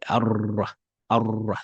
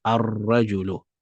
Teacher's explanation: because the Ra is a sun letter, we have to make the lam silent